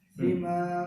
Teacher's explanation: यहाँ ये नोज में आवाज आ रही है गुन्ना और मीम साकिन के बाद बा है, तो ये 5th पॉइंट ऑफ गुन्ना है स्टेप.